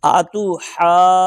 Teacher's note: جیم کو لمبا کر کے کرتے نا نون کے ساتھ ملا دیں گے اور یہاں غنہ بھی کریں گے